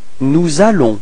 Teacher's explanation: you can notice the liaison between S and A